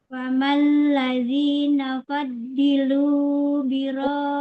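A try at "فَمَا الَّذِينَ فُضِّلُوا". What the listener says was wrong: Dilu fu dhamma. I-nya kepanjangan Bunda mat tabi'inya.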